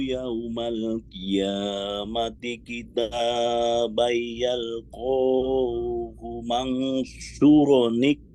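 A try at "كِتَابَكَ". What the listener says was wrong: kitabak ya, tidak ada mat. Kitabak.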